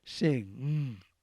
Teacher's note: look at an x-ray it is a little bit different because you use the back of the tongue whereas all the previous examples we've given use the tip of the tongue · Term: ang sound